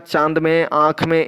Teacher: जिसमें हवा मुख के साथ साथ नाक से भी निकले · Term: अनुनासिक